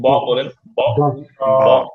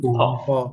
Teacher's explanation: হ আর আপনি ব বলেন, ব ব, দেখেন কোন সাউন্ড মানে ধাক্কা মুখে হাতে পাচ্ছেন না, তাই না? তো ব বলার সময় বাতাসটা জোরে ধাক্কা দিবে না, হ বলার সময় দিবে।